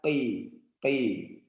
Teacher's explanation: Dia isti'la tapi tidak ada itbaq, tidak tertahan.